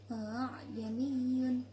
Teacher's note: bacaan tashhil yang artinya membaca antara hamzah dan alif